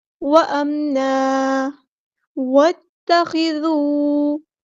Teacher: واؤ کو ہم نے تا کے ساتھ ملا دینا ہے، حمزۃ الوصل ہمارا ڈراپ ہو جائے گا